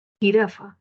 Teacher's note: Entonces, si nos damos cuenta, en zona velar y es fricativo. Entonces, es una consonante fricativa velar.